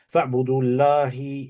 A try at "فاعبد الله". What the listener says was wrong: Is it فاعبدوا? There's a wow or فاعبد? فاعبد الله مخلصا له الدين.